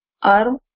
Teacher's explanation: We are merging the noon sakin completely in the ra.